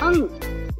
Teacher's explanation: अंग, इसे अनुनासिक कहते हैं, इसका उच्चारण नाक व गले दोनों से किया जाता है